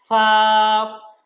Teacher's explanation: আমার সাথে তাপের হরফ হলো সা হরফটা যখন আমরা বলবো তখন জিহবার আগাটা উপরের দাঁতের আগার সাথে লাগিয়ে বলবো